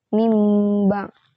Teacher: mengubah atau menggantikan nun mati menjadi mim disertai dengungan jika bertemu dengan huruf ba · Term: iqlab